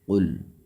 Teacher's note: لام یہاں پر ساکن ہے، جھٹکا بھی نہیں دینا ہے اور موٹا بھی نہیں پڑھنا ہے،